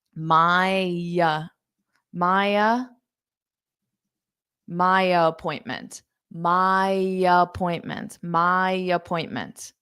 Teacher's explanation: So now I'm doing the same thing, but I'm taking that Y sound, my appointment. So it sounds like the female name Maya, which is a name that we have in English as well.